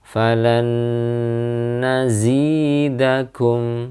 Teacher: bertemu dengan Nun dan juga tanwin bertemu dengan Nun falan nazidakum Ya ditahan pada Nun tasydid